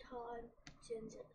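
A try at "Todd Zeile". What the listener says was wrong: There's no Sen. There's no Zen. Come on, man. You got this. Slow it down in your brain.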